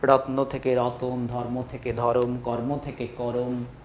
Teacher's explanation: এটাকে এখানে বলা হচ্ছে মধ্য স্বরাগম